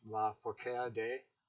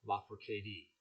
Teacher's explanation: Her name is pronounced La Forcade, okay, with the emphasis on the third syllable like a Spanish word